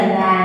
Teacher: tiếng nhà thì là sự kết hợp của phụ âm nhờ, nguyên âm a và thanh huyền